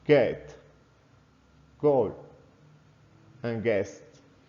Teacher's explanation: the sound is made by voicing out and relaxing the pressure by dropping the tongue down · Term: good sound